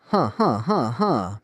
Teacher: Breathy, rapid, almost like a suppressed cough. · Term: play gurgle